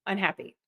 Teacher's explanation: you can hear that un and that e are shorter.